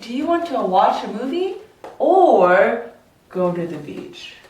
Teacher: For choice questions, you would go up for the first option